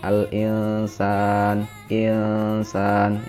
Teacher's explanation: Contoh lafadz al-insana, dibaca samar, nunnya terbaca samar. Ada huruf nun sukun bertemu dengan sin, al-insan, insan. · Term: ikhfa